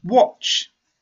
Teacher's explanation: It's not T or D at the end. It's not a voiced sound. It's an unvoiced sound.